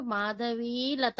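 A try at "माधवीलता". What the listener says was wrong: మనం తెలుగులో పొల్లుని ఇక్కడ పొల్లు అనుకోకూడదండి, అది దీర్ఘం. మాధవి దీర్ఘం.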